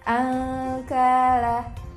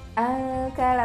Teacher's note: kaf itu di pangkal lidah bertemu dengan langit-langit di atasnya. Jadi angkala, tapi dia tipis ya, berbeda dengan qaf nanti.